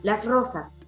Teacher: Y en neutro sería las rosas. Esa R está más suavizada, ¿no? Y nosotros decimos las rosas.